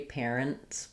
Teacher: the T is going to be a little bit muted or silent because of the rule of three. Parents. It's going to sound pretty much the same as an NS.